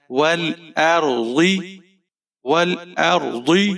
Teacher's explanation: ول، حمزہ کے اوپر زبر ہے، رو ساکن ہے، رو کو موٹا پڑھیں گے۔ ضاد کے نیچے زیر ہے، ضاد کو آپ نے موٹا پڑھنا ہے